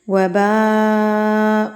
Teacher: It means یہ مد متصل یعنی کہ بڑی مد ہے. اس کو آپ نے 4 حرکات کے برابر کھینچ کے یعنی کہ لمبا کر کے پڑھنا ہے